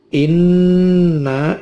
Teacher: Inna, ini nunnya ada tasydidnya, dibaca gunnah. Udara keluar lewat hidung, ditahan selama lebih dari 2 ketuk, boleh 3, boleh 4.